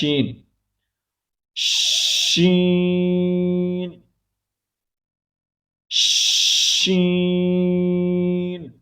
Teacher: زبان کے درمیان کو تالوں کی طرف بلند کرتے ہوئے باریک اور پھیلتی ہوئی آواز میں